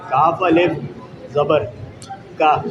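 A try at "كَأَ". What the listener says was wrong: हाँ, ये अलिफ नहीं है ना, क्योंकि जिस अलिफ तो वो है कि जिस पे कुछ भी नहीं है, इस पे तो हमज़ा आ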